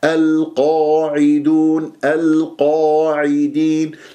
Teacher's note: لا تكبر الشفاه، أهم شيء أنه ترفع أقصى اللسان وتجيب تفخيم مرتبة أولى